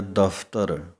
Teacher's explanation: ਉੱਪਰਲੇ ਦੰਦ ਜੇਕਰ ਥੱਲੜੇ ਬੁੱਲਾਂ ਦੇ ਨਾਲ ਲੱਗਦੇ ਹਨ ਤਾਂ ਪੱਫੇ ਦੇ ਪੈਰ ਦੇ ਵਿੱਚ ਬਿੰਦੀ ਦੀ ਆਵਾਜ਼ ਹੈ। ਇੰਗਲਿਸ਼ ਦੇ ਵਿੱਚ ਸਮਝਣ ਵਾਸਤੇ 35 ਅੱਖਰਾਂ ਦਾ ਫਫਾ ਬਿਨਾਂ ਬਿੰਦੀ ਤੋਂ ਐਚ ਦੇ ਨਾਲ ਲਿਖਿਆ ਜਾਂਦਾ ਹੈ।